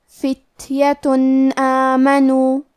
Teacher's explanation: کلمت آمنو الف حروف الاظہار میں سے ہے اور اظہار کا معنی ہے ظاہر کرنا، اور کیونکہ تنوین کی اصلیت نون ساکن ہے تو ہم یہاں تنوین ظاہر کریں گے اور اسے نون ساکن پڑھیں گے اور بغیر غنہ سے یہ حکم کو ادا کریں گے